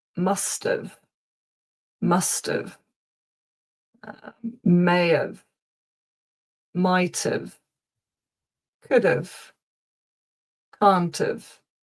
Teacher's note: the have is not usually pronounced like have. It's normally of because it's not emphasized.